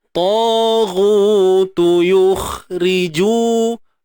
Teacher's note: Kha ni rakhawah. Suara mengalir.